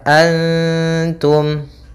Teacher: Cara membacanya, samarkan nunnya kepada ta, antum. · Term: ikhfa hakiki